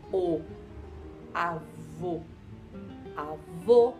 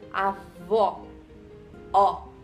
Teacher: Percebe que avó é bem mais aberto, né? Avó. Ó, enquanto avô é mais fechado.